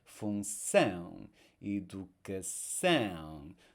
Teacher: So it's actually the next to last syllable we stress in English. Whereas in the Portuguese cognates, it's the last syllable where we are putting the stress. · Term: word stress